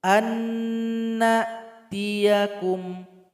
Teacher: nunnya sudah bergabung kepada nun yang kedua. Dan yang terasa bunyinya adalah nun yang kedua. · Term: idgham bi gunnah